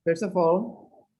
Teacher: the T is silent, so you link the S with the O and the F with the A.